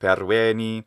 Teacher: he shortens the e in the end of perueni